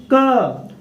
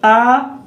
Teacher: क को बोलने में अ की ध्वनि इसमें शामिल हो जाती है